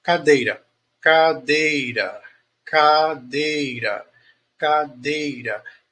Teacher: O dei é a sílaba mais forte.